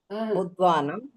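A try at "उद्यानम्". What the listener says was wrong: உத்வானம் இல்ல, தகாரா யகாரா சேர்ந்து வந்தா இந்த மாதிரி வரும், உத்யானம். வித்யா படிச்சே இல்லையா? உத்யானம்,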